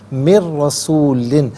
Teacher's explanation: نون کی آواز نہیں بلکہ را کی آواز کو ادا کیا جائے گا۔ من رسول پڑھنا غلط ہے، من رسول، یہاں پر یرملون کا جو قاعدہ ہے وہ اپلائی ہوگا، اور را پر زبر ہے، را پر زبر یا پیش ہو تو را کو پر پڑھتے ہیں، زیر ہو تو باریک پڑھتے ہیں، یہاں پر کر کے پڑھا جائے گا۔